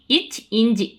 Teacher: இச் இஞ்சு இரண்டும் நாவின் இடைப்பகுதி நடு அன்னத்தின் இடைப்பகுதியை பொருந்துவதால் பிறக்கிறது. இச் இஞ்சு இரண்டும் நாவின் இடைப்பகுதி நடு அன்னத்தின் இடைப்பகுதியை பொருந்துவதால் பிறக்கிறது.